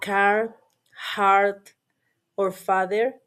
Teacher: the speakers pronounce the R sound clearly in all positions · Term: rhotic